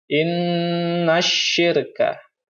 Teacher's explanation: Selanjutnya pada lafaz asyirka, ini ada alif lam syamsiyah. Setelah alif lam, ini ada huruf shin, jadi langsung dimasukkan atau diidghamkan ke huruf sin.